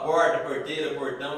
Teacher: Fala porta, porteira, portão, isso a gente entende como R retroflexo.